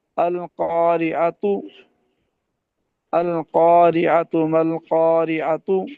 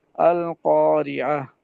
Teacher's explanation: یہ جو آخر میں یہ تا ہوتی ہے، جب اس کو ٹھہریں گے تو اس کو ہا ساکنہ سے بدل دیں گے